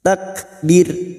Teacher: ro sukun yang dibaca wakaf sebelumnya ada harakat kasrah kita baca tarkik atau tipis takbir dengan posisi bibir yang tersenyum karena kita wakaf di sini